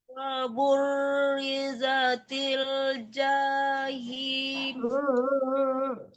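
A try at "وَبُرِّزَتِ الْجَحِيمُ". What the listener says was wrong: Huruf yang berharakat miring begitu jangan dipanjang-panjangkan, jangan tertahan.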